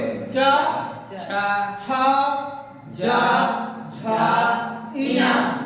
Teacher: च वर्ग च वर्ग का उच्चारण स्थान क्या है? तालु से बोले जाएंगे